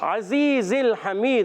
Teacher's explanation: अजीज़िल हमीद, आइन के अदायगी हलक के दरमियान वाले हिस्से से. अजीज़ में जा सीटी के साथ अदा होता है, और या साकिन से पहले जेर है, या मद्दा भी है. · हमीद में हा भी हलक के दरमियान वाले हिस्से से, आइन भी हलक के दरमियान वाले हिस्से से.